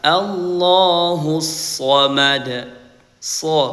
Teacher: Karena shad ini sifat isti maka yang menebalkan bunyi huruf shad itu adalah pangkal lidah kita ya. Sebelah dalam itu hampir menyentuh langit-langit so ya. · Huruf shad dibaca selalu tebal. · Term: huruf sad